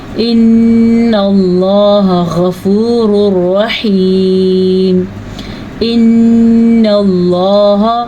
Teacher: अल्लाह का नाम पुर पढ़ना है और नून का गुन्ना ज़रूर अदा करना है